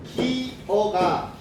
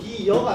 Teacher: 앞말에 이는 그대로 있고 어가 여로 바뀌어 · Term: 반모음 첨가